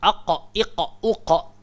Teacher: dia keluar dekat pangkal lidah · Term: huruf qaf